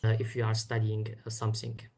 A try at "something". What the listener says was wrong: Again, we get that something, something, something. Two clear S sounds, something. So problem with that th.